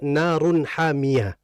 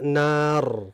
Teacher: Tapi dia dari segi ucapan sama seperti nun mati. Bedanya adalah tanwin dia terucap kalau misalkan nyambung wasol. Kalau waqaf dia enggak terbaca.